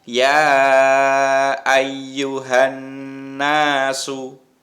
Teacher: Bacaan gunnah itu adalah bacaan dengung. Ya, mendengungnya 2 harokat, berarti agak panjang.